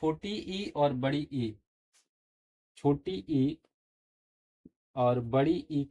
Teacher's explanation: छोटी ई और बड़ी ई का जो उच्चारण है वह तालू से होता है